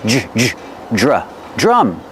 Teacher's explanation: the dr together make the Jj sound like juice and jump plus the R sound